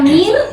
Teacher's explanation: Kalau kita waqaf, kalau kita bilang mir, itu masih tipis.